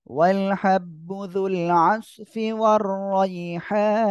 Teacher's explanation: যুল আসফি আইনটা গলাটা চেপে পড়তে হবে